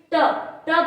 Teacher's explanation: अब M for मूर्धन्य, मूर्धन्य जो मूर्धन्य मतलब मुंह का प्रयोग नहीं, जो जीवा होती है, जीवा थोड़ी ऐसी होती है और उसको बोलने के लिए जैसे ट ट बोल रहे हैं तो जीवा कैसे हो रही है, मुड़ रही है, तो यानी मूर्धन्य